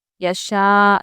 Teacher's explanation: شا بھی ہم کھینچیں گے کیونکہ یہاں پر یا شین پر مد ہے اور یہ مد متصل ہے